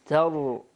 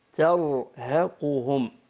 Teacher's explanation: كلمة ترهقهم كما ذكرنا قبل قليل الراء ساكنة مسبوقة بفتح فتقرأ بالتفخيم تر، ونقول ترهقهم تر خطأ ترهقهم.